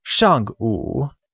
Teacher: Morning is translated as 上午, where 上, meaning before, is said with a falling tone, and 午, meaning noon, is said with a falling rising tone, making it 上午, or before noon.